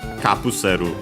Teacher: The accent, luckily, is still on the ka, regardless.